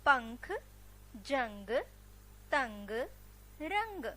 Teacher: इन सारे शब्दों के उच्चारण करने से हमारे नाक से ध्वनि निकल रही है